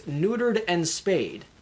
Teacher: we stress the first syllable come down for the next two and then stress the fourth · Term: hitboxes